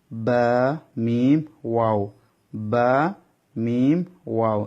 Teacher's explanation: বা মিম এবং বা এই তিনটা অক্ষর দোনোঠ থেকে উচ্চারিত হবে